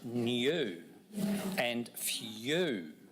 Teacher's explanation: in these words, we hear a slight y sound